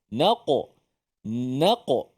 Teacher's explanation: Huruf Qalqalah yang bersifat dengan tebal kita jangan nipiskan dia